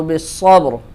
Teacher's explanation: بالصبر، با پہ قلقلہ ہوگا اور یہاں پہ را بھی موٹی ہوگی